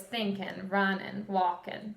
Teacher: All of your ing sounds like thinking, running, walking are going to change to in.